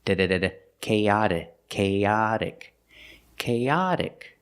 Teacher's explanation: the T is a fast D sound